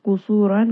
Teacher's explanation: qaf is going to be heavy, sad is heavy, ra is heavy